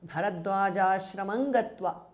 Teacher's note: Bharadwaja ashramam ends in anuswara followed by ga. So it becomes Bharadwaja ashramam gatva. Anuswara changes to nga.